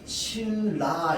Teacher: 리을 리을로 바뀝니다. 니은 뒤에 리을이 나오잖아. 똑같이 리을 리을로 바뀝니다.